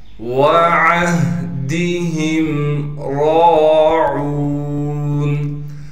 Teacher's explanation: ہا کو صاف کر کے گلے سے نکالیں گے، گلے کا وہ حصہ جو سینے کی جانب ہے · را پر کڑا زبر ہونے کی وجہ سے را کو ایک الف کی مقدار کھینچیں گے اور را کو موٹا بھی کر کے پڑھیں گے